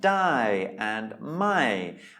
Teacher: you can hear they are both said with a falling tone